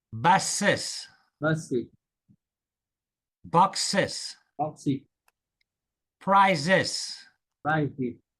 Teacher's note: these words, that S at the end of the word has a Z sound